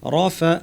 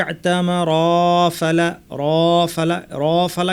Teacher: পরপর এসেছে একটি শব্দের শেষে র আরেকটি শব্দের শুরুতে ফা এসেছে মাঝখানে কিন্তু কোন টান নাই এজন্য রফা টান ছাড়া চলে যেতে হবে